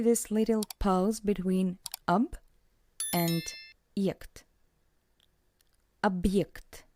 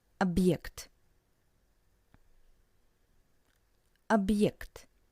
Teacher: you can hear this little pause between ob and ject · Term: very short pause